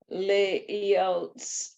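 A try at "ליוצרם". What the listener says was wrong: There's an A under the.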